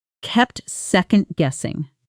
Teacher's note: Notice the natural connected speech in kept second-guessing. It almost blends into one word, kept second-guessing, with barely any gap.